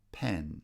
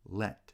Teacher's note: Pen is a lax vowel e, and so is let.